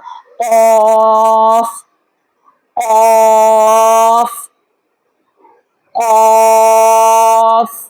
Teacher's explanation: اس حال میں ہم اس کو ادا کریں گے کہ زبان کا جو آخری حصہ ہے وہ اوپر تالو کے ساتھ لگے کوے کے ساتھ ٹچ ہوتے ہوئے جو آخری نرم تالو کا حصہ ہے اس کے ساتھ بھی ٹچ ہو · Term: حرف قاف